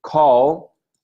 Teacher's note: what we call a velarized L in call